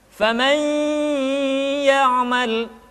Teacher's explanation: Kemudian yang kedua, masukkan ke hidung, karena gunnah tempat keluarnya adalah al-khayshum atau rongga hidung.